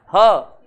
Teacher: हा को कहते हैं स्वर तंत्रीय व्यंजन। हा को बोलते हैं तब हमारी स्वर तंत्रिकाओं में थोड़ा सा कंपन होता है। ह बोलेंगे तो यहां पे देखेंगे हल्का सा वाइब्रेशन होता है, ह, इसलिए स्वर तंत्री व्यंजन कह दिया। · ह बोलेंगे तो यहां पे देखेंगे हल्का सा वाइब्रेशन होता है, ह, इसलिए स्वर तंत्री व्यंजन कह दिया। अब कंठ से, यानी कि इसका उच्चारण गले से होता है, इसलिए हम इसको काकल्य ध्वनि भी कहते हैं